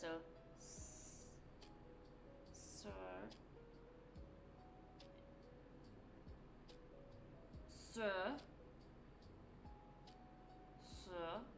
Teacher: So if you're American and not from Boston, you'll have to make sure you don't pronounce an R as well, just the vowel sound